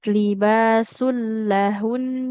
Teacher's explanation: Bagaimana cara membacanya? Nunnya disukunkan tapi tetap dengan gunah.